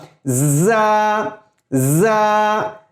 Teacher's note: زا یہ ایک ہنی بی کی آواز پیدا ہوتی ہے